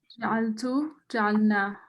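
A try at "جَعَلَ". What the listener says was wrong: Nice. Well done.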